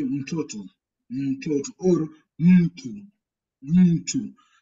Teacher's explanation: Only time there's an M in Swahili, you pronounce it alone. You give a pause. You give a pause in that one before you pronounce the next following consonants that are following.